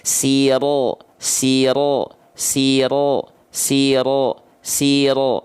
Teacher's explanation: Jadi yang membuat dia tebal itu pangkal lidahnya diangkat, mulutnya untuk sempurna harokat A-nya atau fathahnya dibuka mulutnya tanpa senyum · Jadi tebalnya itu dari pangkal lidah, bukan di O kan, sengaja pengen ngejar vokal O, tapi ngejarnya niatnya harus A, pangkal lidahnya diangkat, keluarlah hasilnya, yaitulah hasilnya, yaitu condong seperti O.